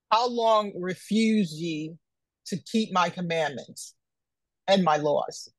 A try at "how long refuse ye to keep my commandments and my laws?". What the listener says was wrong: Question mark. Slow down. You reading it though it's not a question mark right there. When you see a question mark, it's not a run-on sentence. It's not a period there that you pause for a second to read. This is a question mark right there.